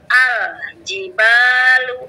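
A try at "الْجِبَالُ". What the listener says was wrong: Tapi jangan diputus ya. Jangan al-jibalu. Jadi tetap disambung.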